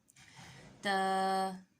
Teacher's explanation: تا کا مخرج کیا ہے؟ زبان کی نوک اور ثنایا اولیہ کی جڑ۔